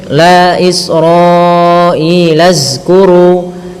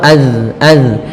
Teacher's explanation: Bagaimana caranya adalah ujung lidah kita tempelkan di lafal, ujung lidah kita menempel dengan gigi seri atas sehingga terlafal az. Kemudian pada lafal kuru, di sini ada bacaan mad tabi'i, yaitu adanya dhammah bertemu dengan huruf waw. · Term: huruf zal